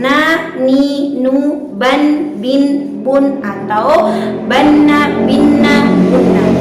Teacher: Dalam ilmu tajwid disebut dengan sifat tawassut atau bainiyah, yaitu berada pada pertengahan. Suara yang dialirkan tidak secara sempurna dan suara yang ditahan tidak dengan secara sempurna, berada pada pertengahan, sedikit mengalir dan sedikit tertahan.